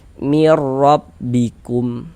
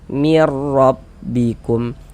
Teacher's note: Nah, maka cara membaca hukum idgham bila gunnah itu dia cara membacanya dengan cara dimasukkan juga bunyi non sukun atau bunyi tanwinnya dimasukkan ke huruf idgham bila gunnah. Tapi dia tidak digunnahkan, tidak disertai dengan dengungan, tidak didengungkan, tidak digunnahkan, sehingga dibaca pendek saja, cukup masuk saja.